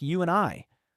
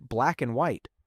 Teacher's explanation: In natural speech, the word and often becomes just n. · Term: sound reduction, Sound reduction